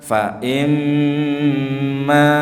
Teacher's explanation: pada bacaan gunnah mim tasydid ditekan ditahan